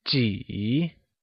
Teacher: how many translates to 几 and uses a falling, rising tone